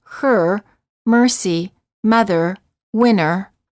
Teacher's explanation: the lips are slightly rounded the tongue is tense and at a mid-level position and the tip of the tongue is curled up and pulled back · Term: IR sound